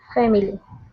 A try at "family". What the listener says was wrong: close. Try to drop that I sound. So just say family. Family. Again, you're kind of adding another syllable in there, that I. sounds like you're almost saying family. It's much more common to say family.